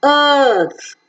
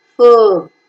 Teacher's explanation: R sound is never pronounced after the vowel sounds, so it is earth.